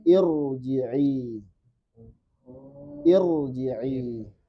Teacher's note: ra sukun sebelumnya hamzah wasl, pastikan dia tebal. Meskipun hamzah waslnya ada kemungkinan dibaca kasroh.